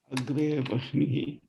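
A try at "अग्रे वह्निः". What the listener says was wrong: Vanhi. It should not be Vahni, it should be Vanhi. Agre vanhi.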